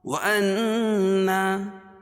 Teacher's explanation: وأنا نون مشدد غنہ ہوگا اور الف سے پہلے نون کے اوپر زبر ہے تو الف مدہ لا، یہاں بھی الف مدہ.